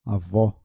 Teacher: A palavra avó tem som aberto na última sílaba